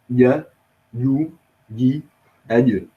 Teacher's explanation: Jim comes from the middle of the tongue and that which is opposite to it of the solid or hard palate.